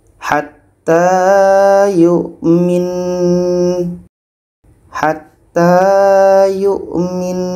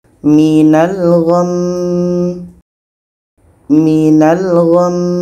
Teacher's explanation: Nun tasydid itu dengan mim tasydid hukumnya adalah wajibul gunah kita harus dengungkan kita dengungkan dulu baru matikan huruf terakhirnya kita matikan nunnya kita